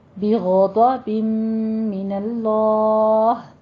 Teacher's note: آگے بغضب من اللہ، بم میں ادغام الغنہ کرنا ہے، 2 کاؤنٹ کرنے ہیں اور لفظ جلالہ کو پر کر دینا ہے کیونکہ اس سے پہلے فتح آ رہی ہے